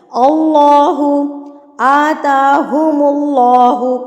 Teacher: جب آپ نے اللہ پڑھتی ہیں آپ کی زبان جو ہے نا اوپر والے دو دانتوں کے پیچھے والے حصے پہ جا کے لگتی ہے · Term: اللہ کو موٹا پڑھنے